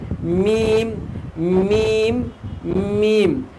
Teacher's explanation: বা আর মিম দুই ঠোঁট শুকনো অংশ থেকে উচ্চারিত হয়